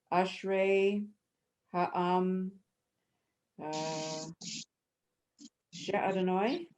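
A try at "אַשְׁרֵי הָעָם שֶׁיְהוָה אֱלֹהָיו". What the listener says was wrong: Exactly. Perfect. Beautiful.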